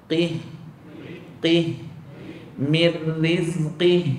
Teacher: yang betul dia ada bunyi memanjang pada H tu